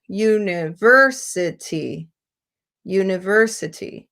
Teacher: So there's a longer time dedicated to the ver, a little bit longer in the u. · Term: secondary stress